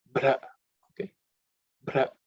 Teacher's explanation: Then bra, the word bra comes here, which is the bha is the fourth letter in the pa varga. So it has to be aspirated.